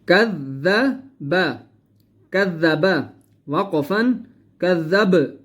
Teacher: آخر کے اندر ہم با کو قلقلہ کریں گے کیونکہ با قلقلہ میں سے ہے · کذب، کذب، وقفا کذب، با کو ہم نے ظاہر کر کے پڑھنا ہے۔ با کے اوپر ہم نے قلقلہ کرنا ہے، ٹھیک ہے۔